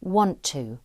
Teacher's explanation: We would say, I want to go on the bus. One of the T sounds becomes elided or left out.